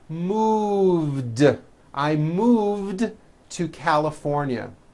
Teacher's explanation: move has that voiced V sound move so it becomes moved I moved to California Buzz becomes